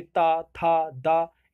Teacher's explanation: दंत में ऊपरी दांतों के निकट से, जैसे ता, था, दा, ये दंत थे।